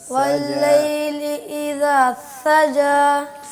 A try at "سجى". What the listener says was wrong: زبان آپ بہت آگے لگا رہے ہیں بیٹا, دانتوں کے ساتھ ٹچ کر رہے ہیں, اس کو پیچھے رکھیے گا. گیپ رکھتے ہیں دانتوں اور زبان کے درمیان جب آپ سین بولتے ہیں تو.